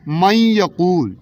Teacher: یا کے اوپر شد لگائیں گے اور اس نون کی آواز کو ختم کر دیں گے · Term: ادغام